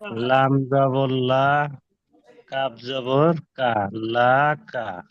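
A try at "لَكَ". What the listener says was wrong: জি, লাটা টান দেয়, লা কা, লা কা। লাকা একদম তাড়াতাড়ি পড়বেন, লাকা।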